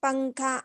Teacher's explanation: نون کی آواز کو ناک میں چھپا کر پڑھنا چاہیے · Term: اخفا